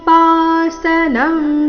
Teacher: ಆಚಾರ್ಯೋಪಾಸನಂ ಶಬ್ದದಲ್ಲಿ ಮೊದಲನೇ ನಾಲ್ಕು ಅಕ್ಷರ ದೀರ್ಘ